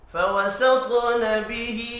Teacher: فوسط طا حروف مستعلیہ ہے، پر پڑھیں گے، طا ساکن ہے، قلقلہ